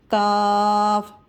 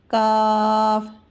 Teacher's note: قاف، قاف اس کے ساتھ کاف، مد ہے تو کھینچ کر پڑھیں گے۔ کاف، کاف کی ادائیگی زبان کے جڑ سے ہوگی